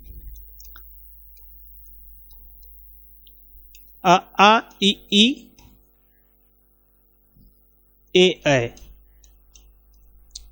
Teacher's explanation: ये वर्ण आपके अवृतमुखी हैं जिनको बोलने पे आपके होठ गोलाकार नहीं होते